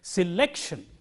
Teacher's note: So, in this word, the syllable immediately coming before shun is lek. So, lek is stressed. So, we say selection, and this rule is universal.